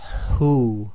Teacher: this is the ha with the forceful exhaling of air which comes from the throat